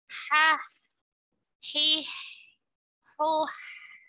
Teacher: ha karena dia memiliki sifat ketika mengucapkannya ada aliran suara dan nafas